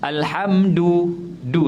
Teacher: selalunya kita baca Dal sentuh lelangit